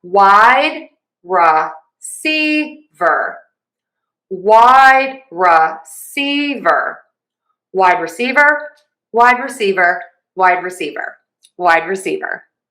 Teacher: Wide is going to get our primary stress and secondary stress will be on C.